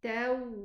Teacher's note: Make sure that the waw has rakhawa, so make sure that you let it run.